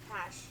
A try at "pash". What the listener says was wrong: Sort of got an R in there, but it doesn't. Pash.